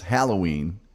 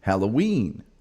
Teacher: the emphasis is on the first syllable. We in the rest of the world, specifically in Indiana, is Halloween on the last syllable.